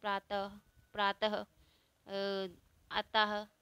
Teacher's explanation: इसका उच्चारण करते समय कुछ ह की ध्वनि निकलती है। जैसे आहा बोलते हैं ना हम इसे, प्रातः, प्रातः, अतः। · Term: विसर्ग